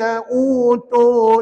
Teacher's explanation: Hati-hati dekat U tu panjang dua-duanya. U panjang, tu panjang juga. Dua harakat ya.